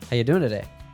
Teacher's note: the pronoun you is reduced to a quick y. With verbs ending in ing, like doing, it's very common that we drop the g sound doing.